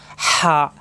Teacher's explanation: কণ্ঠনালীতে চাপ সৃষ্টি হবে, ফ্যাঁস আওয়াজ,